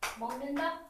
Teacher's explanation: 기억이 앞 뒤에 있는 니은 때문에 이음으로 변했어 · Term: 비음화